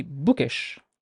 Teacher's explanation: The K is very undoubled, single K